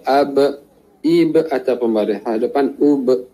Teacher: maka kita tahu dia keluar daripada dua bibir